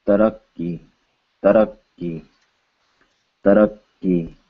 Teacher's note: this is the ka with no aspiration. So you should feel no air on your hand.